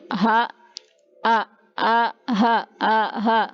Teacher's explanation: Hamzah ha ini keluarnya dari aqsa. Aqsa itu yang paling dalam ya, aqsal halqi.